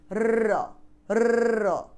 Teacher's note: জিভ একাধিকবার অতি দ্রুত দন্তমূলকে আঘাত করে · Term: কম্পিত ব্যঞ্জন